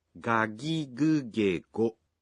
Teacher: In Japanese, you pronounce g in the initial syllables of words as a voiced g